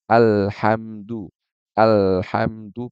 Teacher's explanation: Yang mana Al ini harusnya dibaca dengan tipis ya tapi dia baca dengan Alhamdulillah Nah itu itu apa jadinya